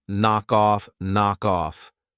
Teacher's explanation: I'm going to pronounce the final K on knock, and I'm going to pronounce it on off, knock off, knock off.